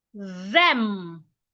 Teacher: Put your tongue in between your teeth. But this time, make sure you feel vibration on your vocal cord. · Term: voiced th